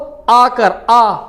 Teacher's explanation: तो समवृत स्वर, अर्ध समवृत, विवृत और अर्धविवृत। विवृत होता है खुला, इकलौता ऐसा स्वर जो पूरे मुंह को खोल देता है।